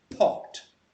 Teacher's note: you feel your breath on your hand okay so that means it's aspirated